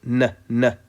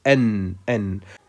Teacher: you just let the tip of the tongue touch the upper gum behind the upper incisors, like this, N. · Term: Noon